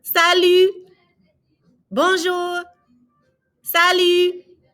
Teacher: Notice we're not pronouncing the T on salut, and there are going to be many words like that you're not going to pronounce that last letter.